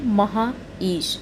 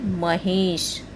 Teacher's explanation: आ और ई दोनों मिलकर के ए के रूप में परिवर्तित हो गए हैं, जिससे बना है महेश। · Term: गुण संधि